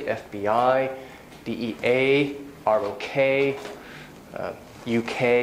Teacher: Abbreviations have the main stress on the last part